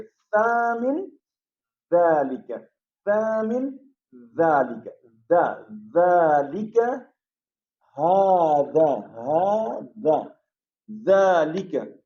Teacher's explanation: ذال کی جو آواز ہے وہ بالکل سا کی طرح سے ہے، اس کی بھی آواز نو کے زبان، نو کے زبان کو استعمال میں لائیں گے ہم. یہ ہماری زبان کی نوک ذرا سی باہر نکلے گی، یہ دونوں حرف جو ہے، یہ دونوں حروف آپس میں ادا ہو جائیں گے.